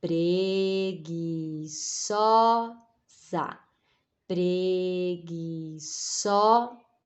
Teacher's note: O za é só o finalzinho. A gente nem coloca tanta força.